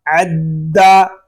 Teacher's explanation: دال مشدد ہے اس کو جماؤ کے ساتھ ادا کریں گے